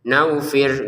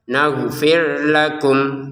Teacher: Untuk ghinnya perhatikan di sini jangan sampai seperti huruf G dalam bahasa Indonesia ya. Itu kan terlalu kasar. Naghfir. Atau seperti huruf wawu ya, enggak boleh. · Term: huruf ghin